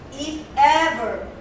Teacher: You see the intonation, it goes up and then goes down.